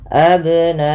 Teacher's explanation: ini bila ia sukun atau mati dihukumi dengan bacaan qalqalah, karena ada sifat yang melekat pada huruf ba yaitu qalqalah, yang dimana memantul ya bunyinya , maka tidak dibaca dengan abna'ahum tapi harus ada pantulan abna'ahum,